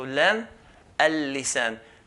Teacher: Then we have here lam. Lam is pronounced, and it's pronounced on the edge of the tongue as well.